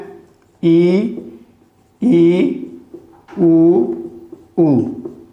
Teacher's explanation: इसमें जो है हमारा मुख 25% तक खुलता है, यानी बहुत ही कम खुलता है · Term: संवृत स्वर